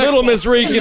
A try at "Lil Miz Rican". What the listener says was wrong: Lil Miz Rican. No, there's a Z on it. Lil Miz Rican.